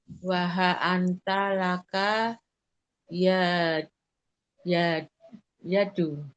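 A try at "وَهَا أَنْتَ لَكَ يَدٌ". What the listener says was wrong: Kenapa yadu? Nakirah harusnya ditanwin. nanggung-nanggung bacanya. Nah, begitu yadun. Kalau ada alif lam baru al yadu. Ini nakirah. Waha anta laka yadun.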